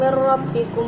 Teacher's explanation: terdapat bacaan idgham bila gunnah sebab nun sukun bertemu ra